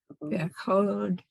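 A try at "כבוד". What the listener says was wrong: It's it's a K and then a V next to it. Kivod.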